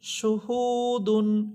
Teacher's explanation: হু মাশহু দাল দুই পেশ দুন মাশহুদুন এখানে আমরা জানলাম যে পেশের পর ও সাকিন হলেও এক আলিফ করে টেনে পড়তে হয়